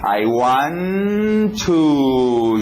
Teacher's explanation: 2 T's, eu não preciso dizer 2 T's, posso fazer um só. I want to, já estou na posição do W, were.